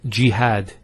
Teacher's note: we have a feta on the ha followed by the alif and that gives the elongation of the a sound